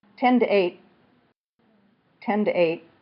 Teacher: The first one, 10, is aspirated.